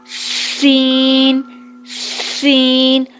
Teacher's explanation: اس کے بعد زبان کے کنارے کو ثنایا علیہ اور ثنایا سفلی کے کنارے پر لگائیں گے، رکھیں گے، اور پھر آواز آئے گی سین سین۔ پہلے سیٹی کی آواز آئے، اس کے بعد پھر باقی ادائیگی ہوگی۔